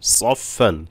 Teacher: সদ মোটা হবে। সদ ফাকে ধরবে। সফ সাকিনের উচ্চারণ।